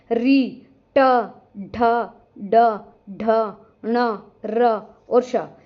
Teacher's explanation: बात करें मूर्धन्य वर्ण की। जिन वर्णों के उच्चारण में जो हमारी जीभ है, मुर्धा मतलब दांतों के ऊपर जो हमारा खुरदरा सा स्थान है ना, वहां पर जाकर लगती है।